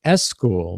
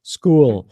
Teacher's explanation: So in school, the only thing, was talking about school, we want to make sure, you don't say S school, because it's not S school. We just start with the S sound. We say school.